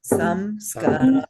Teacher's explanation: So 2 beats for the ska and 1 beat for sam and ra.